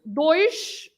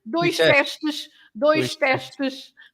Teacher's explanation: Dois with sh at the end